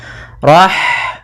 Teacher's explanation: H mempunyai sifat yaitu sifat Hames maka alirkan nafas kita